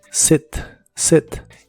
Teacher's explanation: se pronuncia con la i corta que se parece un poco a la e